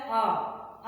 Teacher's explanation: आ करने पे हमारा ओठ गोल नहीं होता है, तो ये गोल नहीं होता, तो इसके लिस्ट में आएगा आ। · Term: आवृत्तमुखी